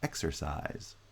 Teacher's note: stressed but eck has higher pitch we call that primary stress size does not have vowel reduction it has some degree of stress we call that secondary stress it doesn't get the same rise in pitch that x gets